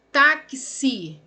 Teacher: Então tem 4 letras e esse X aqui, que era apenas um som, se transformou em 2, que é o K e o S, que a gente fala QC.